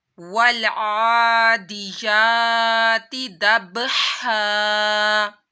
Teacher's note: आइन के ऊपर खड़ा माद था तो इसको एक अलिफ के बराबर खींचा।